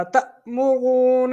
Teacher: حمزہ ساکن کو ہمیشہ جھٹکا دے کے پڑھا جاتا ہے